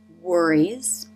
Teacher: Lips form a tight circle for the W.